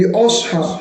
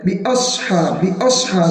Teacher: علم تر کیف فعل ربک باصحاب الفیل، باصحاب الفیل کے اندر بھی صاد جو ہے وہ الف کو کچھ ایسے کرتا ہے جیسے کہ باصحاب، حالانکہ حمزہ تو باریک ہے، اس کو تو بالکل باریک کر دینا ہے۔ باصحاب، باصحاب، صاد کو پور کرنا ہے۔